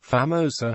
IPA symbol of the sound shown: eɪ